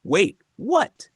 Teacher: voice jumps up Suddenly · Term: Surprise